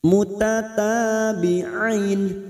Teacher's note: Kita panjangkan 4 harokat kita samakan dengan mat arid li sukun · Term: mat lain